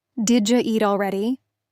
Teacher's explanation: Did you blends into did ya.